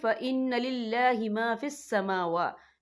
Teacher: دونوں جگہوں پہ کھڑی حرکات ہے، تو ہم یہاں 2 یا 3 حرکت کے برابر کھینچیں گے